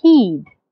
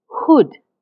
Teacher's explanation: the ha in heed, my lips are slightly spread? But the ha in hood, my lips are slightly rounded.